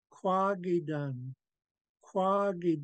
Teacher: our emphasis is definitely on this long a with a tone Mark